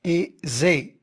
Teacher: zé, c'est une syllabe ouverte, alors le E il est fermé